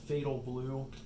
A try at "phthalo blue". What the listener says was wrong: You say fatal with an F? It's not fatal. Phthalo. Phthalo blue. It's not fatal.